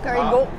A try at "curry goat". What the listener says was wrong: No, goat. Goat. You're like you're saying GW, but you're not saying the W fully. Go. Curry goat.